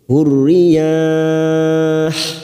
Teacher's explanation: Yah kita panjangkan 4 harokat mad arid lisukun.